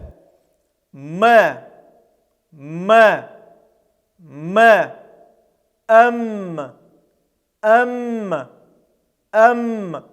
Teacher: мы закрываем губы губы смыкаются и звук таким образом идет через нос